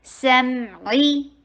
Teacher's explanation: میم کے پر تھوڑا سا ٹائم لگائیے اور عین کو حلق سے نکال کے اور کسرہ اتمام الحرکہ کیجئے ، کسرہ کے لیے ای کی ساؤنڈ کیجئے، سمعی، اور ٹائم